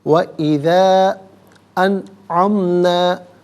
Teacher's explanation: وَإِذَا أَنْعَمْنَا، انعمنا میں نون ساکن کے بعد عین حرف حلقی ہے تو یہاں نون ساکن کو بغیر غننے کے اظہار کے ساتھ پڑھا جائے گا